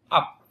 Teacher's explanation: Tự nhiên, tự nhiên, mở khẩu hình tự nhiên như âm ơ nhưng mà phát âm á, như là âm ơ. Mở khẩu hình tự nhiên như âm ơ nhưng mà ta sẽ phát âm là phát âm á.